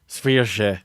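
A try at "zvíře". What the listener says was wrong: Well, your problem is you can't do the r, and you need the r combined with the j sound, the sh, to do it, and it's really hard to do.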